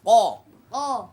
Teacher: জিহ্বার গোড়া তার বরাবর উপরে তালুর সাথে লাগা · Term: মোটা হরফ